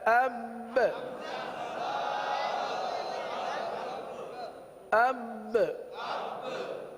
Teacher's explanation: آگے اب با حرف آ گیا، با حرف قلقلہ کا ہے، تو یہاں پر جماؤ کرتے ہوئے قلقلہ بھی ادا کریں گے۔